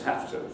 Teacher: You have to pronounce have to as have to. And the V there turns into an F, as I think you'll be able to hear.